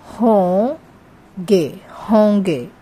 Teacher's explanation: Instead of putting inge, we just put a nasal sound and ge.